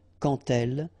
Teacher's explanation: when you will have this D, you will phonetically pronounce it like T